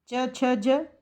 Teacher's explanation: च छ ज तालव्य से इनका उच्चारण हो रहा है।